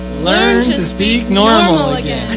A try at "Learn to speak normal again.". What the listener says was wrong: No, wait, don't accent normal. You sound like a commercial.